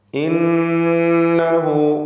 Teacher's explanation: ഇന്നഹു, ഇതിൽ നൂൻ മുഷദ്ദദ, ഷദ് നൽകപ്പെട്ട നൂനിനെ 2 ഹറക്കത്തിൻ്റെ അളവിൽ മണിക്കണം.